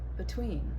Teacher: in the preposition between the stress is on the second syllable